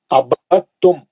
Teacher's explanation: ابد دال نہیں پڑھیں گے، آپ دال پڑھ کے دال کا خلخلہ کر کے تا نہیں پڑھیں گے. دال کو چھوڑ دے کے با سے سیدھا تا میں چلے جائیں گے. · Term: ادغام متجانسین